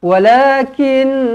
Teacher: Nun sabdu wajibul gunna dengungkan dua harakat